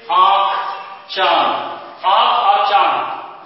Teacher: इसकी जो ध्वनि निकलती है हमारे नाक और मुंह दोनों से निकलते हैं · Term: अनुनासिक